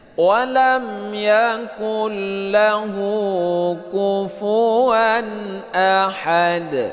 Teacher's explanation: Nah, ini walam izhar syafawi. Yakul ini idgham bila gunnah, tidak berdengung, dia itu seperti bertasydid